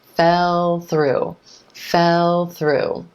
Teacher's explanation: That ends up sounding choppy and unnatural. You want to keep that continuous L going right into the TH.